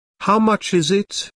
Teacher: notice that the main sentence stress falls on is in this question